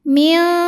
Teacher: Karena ada nun sukun yang bertemu dengan huruf kaf. Maka nun sukunnya dibunyikan samar-samar, siap-siap membunyikan kaf ya, disertai dengung, dan dengungnya besar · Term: ikhfa ab'ad